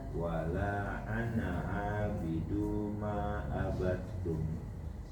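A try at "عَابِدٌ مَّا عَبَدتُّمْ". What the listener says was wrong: abidum. Abidum gunna. abidum. Abidum. Lengket langsung.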